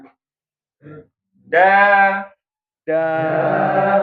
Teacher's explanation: Kalau huruf dal itu di atas ya, sama tempatnya dengan huruf T